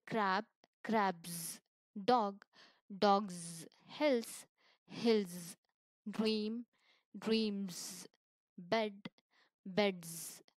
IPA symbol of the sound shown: z